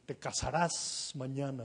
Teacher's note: en nuestro español las S finales son plenas, son tensas, son absolutas.